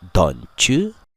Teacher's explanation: T dan Y, jika digabungkan menghadirkan suara C